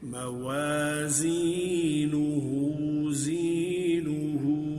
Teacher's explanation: वा पे होंठ गोल होंगे